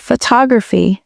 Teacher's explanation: The stress is on the first syllable, photograph. But in the word photography, the stress shifts to the second syllable, photography. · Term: word stress